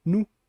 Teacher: Que ali a gente sabia que bom já tinha uma vogal e foi ditongada, não já tem a ditongação ali nasalizada, mas que sofre uma monotongação para virar num e depois perder até essa, ou diminuir a nasalização com o tempo, virando só nu.